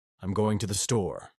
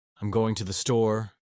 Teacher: Three, the uptalk at the end of sentences. Californians often raise their tone at the end of sentences, making everything sound like a question.